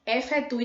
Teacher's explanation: Efetue termina com a palavra E, mas quando pronunciamos é como se fosse um I.